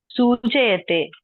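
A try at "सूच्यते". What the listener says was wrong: సూచ్యతే. సూచ్యతే. సూచ్యతే. చా సగమే రాయాలి. సూచ్యతే.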